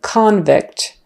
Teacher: a noun to a verb just by changing the syllable stress the noun often has the stress on the first syllable as in convict and the verb often has a stress on the second syllable